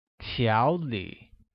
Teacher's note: pronounced with a mid-rising tone on a and a falling rising tone on i